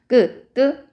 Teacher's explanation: 된소리는 성대 근육이 긴장돼서 나오는 소리지만 숨이 거세게 나오지는 않는 그런 소리입니다.